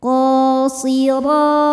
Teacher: huruf ro dibaca secara tafkhim karena berharakat di atas yaitu harakat fathah. Cara bacanya ditebalkan.